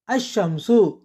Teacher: நடுப்பகுதியை தொடுகிறது இல்லை அடுத்து இஷ் என்ற எழுத்து வரும்போது சரளமாக சொல்ல முடிவதில்லை இங்கு இல் உச்சரிப்பை இழந்து இஷ் இரட்டிப்பாகி அஷ்ஷம்சு என்று ஆகிறது